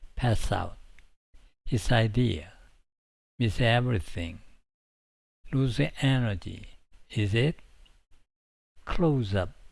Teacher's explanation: 스, 즈, 이즈로 끝나는 단어는 모음으로 시작하는 단어와 연결될 때 소리가 자연스럽게 이어집니다. 예를 들어 pass 하고 out이 결합되면 pass out 이렇게 자연스럽게 연결됩니다.